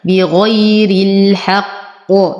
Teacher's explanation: أفخم القاف وأعطيها القلقلة الكبرى وقفا.